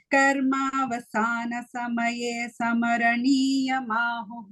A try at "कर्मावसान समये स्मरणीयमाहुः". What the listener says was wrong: You are saying samaraniya. It is smaraniya.